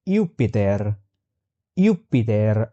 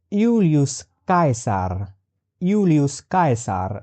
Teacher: in Latin there is no such sound as ja